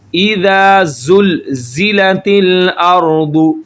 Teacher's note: زا جو ہے یہ نیچے والے دانتوں کی جڑ کے ساتھ جب زبان ٹچ ہوتی ہے تو یہ نکلے گا